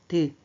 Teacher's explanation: 혀끝이 윗잇몸에 붙었다 떨어지죠. 드 앞니 뒤에 있는 윗잇몸에 붙었다 떨어지더라.